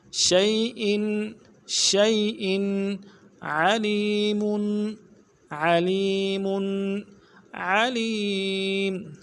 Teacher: بکل وهو بكل شيء. شین کو یا کے ساتھ ملانا ہے، یا لین ہے بغیر کھینچے پڑھیں گے